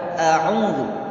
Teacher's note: Kalau a itu dari pangkal tenggorokan paling bawah, huruf ain itu pada tengah tenggorokan, a'udzu. Maka huruf ain harus dibaca ain.